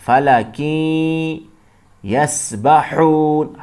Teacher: ہا گلے سے ادا کریں گے